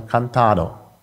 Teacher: in Südfrankreich aber kantado da ist das D noch vorhanden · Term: intervokalischen verschlusslaute